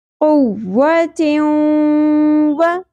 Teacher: تیوں، دو زیر تنوین کے بعد یمنو میں سے حرف واو آ گیا، یہاں پر ہم نے ادغام کرنا ہے، ملانا ہے ساؤنڈ کو اور ناک میں کھینچنا بھی ہے، یعنی غنہ بھی کرنا ہے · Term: ادغام مع الغنہ